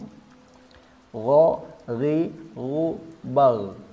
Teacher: pangkal lidah ini sifatnya sama-sama di dinaikkan dan dinaikkannya hampir bertemu tidak sampai bertemu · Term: istila